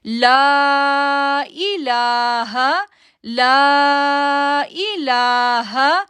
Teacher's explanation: اب دیکھیں لا کو ہم نے کتنی دیر کے لیے کھینچا, 3 سیکنڈ کے لیے کھینچا, اور پھر آگے والا جو لام ہے اس کو 2 سیکنڈ کے لیے کھینچا کیونکہ اس کے اوپر کھڑی زبر آ رہی ہے.